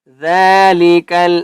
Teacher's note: ذالک ذال کے اوپر کھڑا زبر ہے، اس لیے ہم نے ذال کو 1 الف کی مقدار کھینچ کر پڑھیں گے